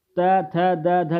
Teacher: त, थ, द, ध जो होती हैं क्या होती हैं, दंत ध्वनियाँ होती हैं।